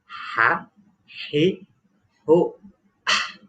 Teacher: Tidak boleh ada kedengaran K, tetapi H tipis. Ada suasana huruf K-nya, tetapi K-nya tidak boleh nampak.